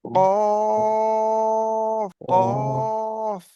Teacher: জিভের গোড়া এবং তার বরাবর উপরে তালুর সাথে লাগিয়ে উচ্চারিত হয় কফ।